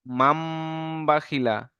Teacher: মিমের দ্বারাই পরিবর্তন করে এক আলিফ পরিমাণ গুণনা করে পড়তে হবে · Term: ইকলাব